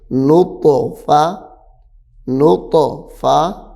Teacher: یہاں پہ طا حروف قلقلہ ہے تو طا کو بھی ظاہر کر کے پڑھیں گے